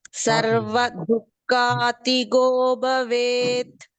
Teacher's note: ಭ ಕೂಡ ಮಹಾಪ್ರಾಣ ಇದೆ